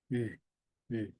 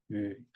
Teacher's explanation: 그래서 우 입모양을 하고 이로 소리를 내면 돼요.